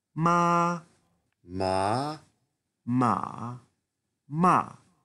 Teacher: C'est la même voyelle. Elle est prononcée dans ta bouche exactement au même endroit. Ce qui change, c'est la mélodie.